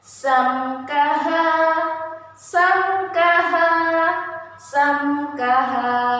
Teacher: Nah, jadi mengapa disebut dengan izhar syafawi? Karena ada mim sukun bertemu dengan huruf kaf, maka dibaca jelas di bibir.